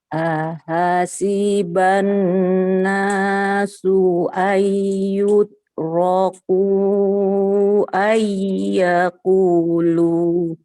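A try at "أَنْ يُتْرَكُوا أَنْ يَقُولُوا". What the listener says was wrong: Baik, dari ayyutraku. Ya-nya sedikit lagi kurang lama ditahannya ya. Kenapa lama? Karena sebelumnya ada nun. Ayyutraku ayyakulu.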